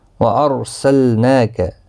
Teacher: را ساکن سے پہلے زبر ہے تو اس لیے پر پڑھا جائے گا۔ وارسلناک، نون کے اوپر کھڑی زبر ہے، 1 الف کی مقدار کے برابر کھینچ کر پڑھیں گے، لام ساکن کو ہلانا نہیں۔